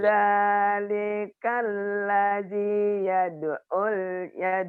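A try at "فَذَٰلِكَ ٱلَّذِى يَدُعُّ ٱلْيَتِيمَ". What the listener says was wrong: Bukan. Bukan ini si Ibu ini susah tasdid ya. Fadzalikal ladzi yad'ul yad'ul yad'ul yatim.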